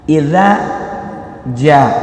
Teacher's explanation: Idza cuma panjangnya yang za 2 ketukan. Idza ketukan itu arti dari harokat. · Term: mad asli